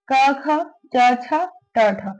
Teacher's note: अघोष जिसके उच्चारण में कंपन पैदा ना हो, इसके उच्चारण में कंपन महसूस नहीं होता है।